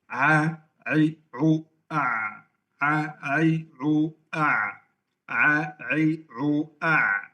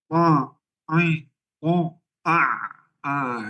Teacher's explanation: Karena asalnya saat mengucapkan huruf ain, saya tidak menggunakan hidung.